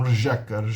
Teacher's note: É um som tipicamente do tcheco, só no tcheco tem um R palatal. · Ela tem ainda um som de R no começo, mas ele tem um som de J depois. É um rjeka.